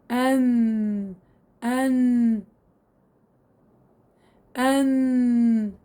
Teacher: طرف اللسان مع ما يحاذيه من لثة الأسنان العليا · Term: حرف النون